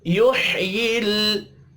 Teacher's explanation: युह्यिल लाम साकिन पर कलकला नहीं करना।